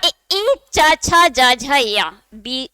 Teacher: जीभ का मध्य भाग मसूड़ों के पास जाके स्पर्श हो रहा है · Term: तालव्य वर्ण